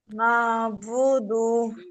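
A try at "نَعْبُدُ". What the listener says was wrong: আইনটা উচ্চারণ করুন, আইন উচ্চারণ হচ্ছে না। না, নুন হামজা যাবার না, আইন আইন, সরি আইন, নুন আইন যাবার না, নু-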